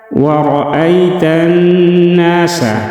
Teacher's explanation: را کو موٹا پڑھیں گے، را کے اوپر زبر ہے۔